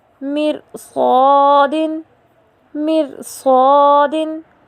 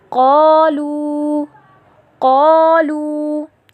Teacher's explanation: حرف الف سے پہلے حروف استعلاء میں سے صاد آ رہا ہے، جس کی وجہ سے ہم نے حرف الف کو موٹا ادا کیا